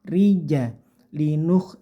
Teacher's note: rinya tipis saja Ini namanya ro tarqik · tidak miring ke o, tapi khoknya kasar atau mendengkur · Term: rok tarkik